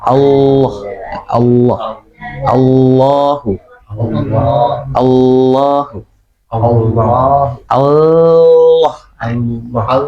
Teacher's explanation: Jadi nempelnya itu lidahnya itu makin melebar baru Allah jadinya tebel. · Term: Lafzul jalalah